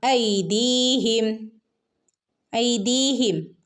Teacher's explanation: ഐദീഹിം ഇവിടെ യാ മദ് ഉണ്ട് രണ്ടനക്ക് നീട്ടി കൊടുക്കുക